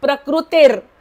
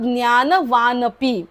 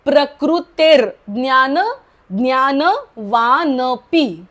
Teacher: पुढचा रफार आधीच र बोलून घ्यायचा आणि मग पुढचा शब्द बोलायचा